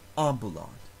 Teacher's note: The second to last syllable of ambulat has a short vowel followed by one syllable, so the stress moves back to the third to last syllable